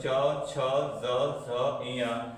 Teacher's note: और च वर्ग किसे बोलते हैं हम लोग? तालु से या फिर तालव्य से।